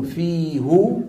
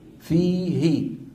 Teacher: إن أتى قبلها يا ساكنة بدل ما يقولوا هو يقولوا هي، يعني بدل ما يقولوا في هو شو يقولوا في هي.